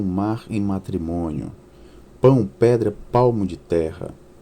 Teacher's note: O texto 2 emprega recursos estruturais, tais como imagens de instrumentos e aliterações, privilegiando oclusivas e nasais bilabiais, com o intuito de evidenciar a natureza rítmica sugerida no poema.